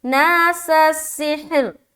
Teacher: پھر سین کو سین سے ملانا ہے